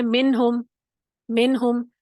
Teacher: اب ہمارے پاس حروف حلقی اور لام را کی یہاں پہ مثالیں بھی دی گئی ہیں، منہم، منہم، اب منہم یہ تو نہیں پڑھتے ہم، منہم ظاہر کر کے پڑھتے ہیں غنہ کے بغیر